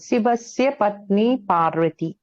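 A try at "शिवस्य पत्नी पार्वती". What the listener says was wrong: పత్ని పార్వతి. దీర్ఘాలు పెట్టండి కొన్నాళ్ళు.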